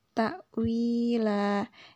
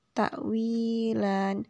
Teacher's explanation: Lan di sini ada fathatain, namun karena sudah berada di akhir ayat, maka fathatainnya berubah menjadi fathah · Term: mad iwad